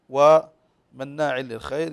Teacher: عندنا غنه بمقدار حركتين فنقول بمن ضل والكلمه الاخرى مناع للخير النون مشدده تغن بمقدار حركتين